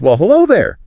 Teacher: putting extra emphasis on hello to show her surprise. Yeah, adding that there, and the emphasis makes it clear she wasn't expecting to see this person.